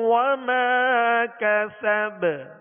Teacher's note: وما کسب با پر زبر ہے، جب ساکن کریں گے تو اس میں بھی قلقلہ ہوگا